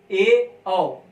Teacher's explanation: ए औ, इसमें मुंह जो है आधा बंद रहता है